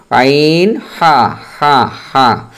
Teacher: দুই নাম্বার মাখরাজ হালকার মধ্যখান হইতে আইন হা